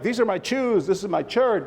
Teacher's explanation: in Spanish there is no sh sound it's all a hard CH